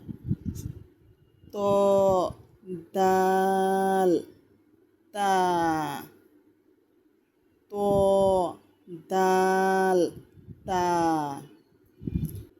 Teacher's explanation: 11 নম্বর মাখরাজ, জিহ্বার আগা সামনের উপরের 2 দাঁতের গোড়ার সঙ্গে লাগাইয়া